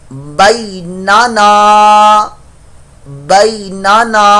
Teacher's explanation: نون الف زبر نا یہ الف مدہ بن گیا, ایک الف دو حرکات کے برابر اس کو لمبا کر کے پڑھیں گے